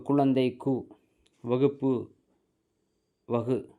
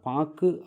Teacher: வருது ஆனால் பாக்கு அப்படின்னு சொல்லும் பொழுது மாத்திரை அளவு என்பது குறைகிறது அப்போ ஒரு மாத்திரை அளவிலிருந்து குறைந்து அரை மாத்திரை அளவாக ஒலிக்கிறது இப்ப குழந்தை அப்படின்னா ஒரு மாத்திரை அளவு வகுப்பு அங்கி ஒரு மாத்திரை அளவு